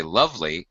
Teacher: we say lovely we stress the first syllable